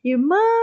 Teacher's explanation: a sílaba tônica dessa palavrinha é a última sílaba última penúltima né no caso aqui como é mã a sílaba